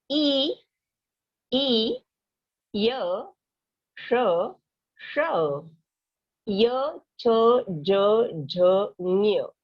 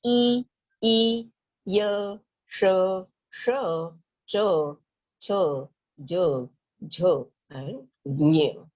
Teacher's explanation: ये वर्ड्स कहते हैं, तो आपको समझ में आता होगा कि आपका जो टंग है, आपकी जो जीभ है, वो थोड़ी सी ऊपर पैलेट को लगती है, पिछली बाजू , यानी कंठ से लेके थोड़ी सी कंठ से आगे, लेकिन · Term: तालु